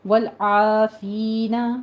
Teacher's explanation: لام کو سٹاپ کرنا ہے، ولا نہیں کہنا۔ آ میں فتح کا، یہاں آ میں الف مدہ ہے، فی میں یا مدہ ہے، 2 کاؤنٹ کیجئے۔